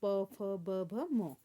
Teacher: होंठ टकराते हैं दोनों होठों की सहायता से, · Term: ओष्ठ